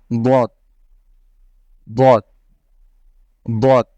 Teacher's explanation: র র র এবং এখানে আপনারা দেখতে পাচ্ছেন বদ এটা হলো বাংলা দ থেকে সামান্য একটু পাতলা করে পড়বেন তাহলেই আপনাদের এই উচ্চারণটা এসে যাবে বদ বদ বদ র বদ